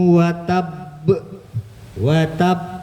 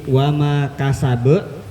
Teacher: Yang satu lahabiu watab, watab, ditahan dulu baru dipantulin. Tapi yang kedua maluhu wa ma kasab, nggak mantul, nggak ditahan dulu. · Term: kolkolah